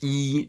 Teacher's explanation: high in front if we look at the tongue body position the highest arch of the tongue is in a high position and also in a front position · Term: corner valves